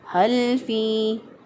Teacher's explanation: ہا کو ہم نے اقصی حلق سے ادا کیا،